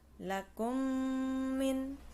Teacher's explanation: cara membaca Idgham Mimi harus dibaca dengan dengung jadi ada ghunnah disitu